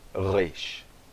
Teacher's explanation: No hebraico moderno, o resh é pronunciado resh. Tá bom? É um som mais gutural, mas pensamos que realmente no aramaico antigo, o resh era pronunciado como o nosso R, por exemplo, em periquito.